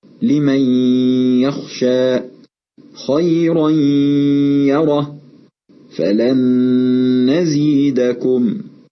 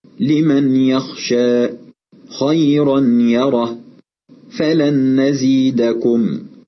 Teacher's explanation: لاحظ أننا أدخلنا النون الساكنة والتنوين في حروف الإدغام، وحدثت الغنة التي هي صوت يخرج من الأنف بمقدار حركتين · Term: إدغام بغنة